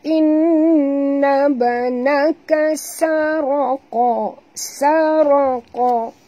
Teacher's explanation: sa ni jangan tebalkan dia, yang tebal ra dengan qa ya